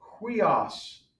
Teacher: And then finally, huios. Now that does have a rough breathing mark. So you want to put the H sound in the front of that.